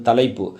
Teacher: மொழியோட இடையில் வரக்கூடிய ஐகாரம் ஒரு மாத்திரை குறைஞ்சிரும் ஒரு மாத்திரை தான் ஒலிக்கும் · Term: ஐகாரக் குறுக்கம், ஐகார குறுக்கம்